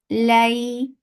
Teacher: There is softness of lean and the sound of fatha. Lay, na, 2 counts long.